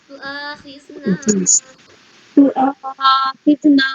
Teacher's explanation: تو آخذنا، یہاں پہ بھی کھینچیے. تؤاخذنا آ میں زیادہ نہیں کھینچیں گے، نا میں زیادہ کھینچیں گے. تو آخذنا، تؤاخذنا اور یہاں پہ غنہ کریے گا.